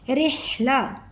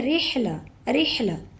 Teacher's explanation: ہا کی آواز حلق سے نکلنی چاہیے